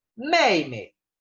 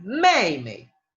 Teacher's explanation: Es una E parecida al español, quizás mucho más abierta. Y es larga. La I aquí es más corta. El énfasis recae sobre la E.